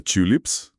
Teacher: onde o U é completamente fechado, quase fazendo um bico